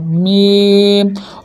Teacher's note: ये जो थूक वाला हिस्सा है यहाँ से बादा होगा, बा, ठीक है। और मीम दोनों होठों के खुश्क हिस्से से